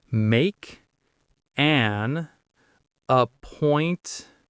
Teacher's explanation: Make an appointment. Notice how those first two words make and an link together in American English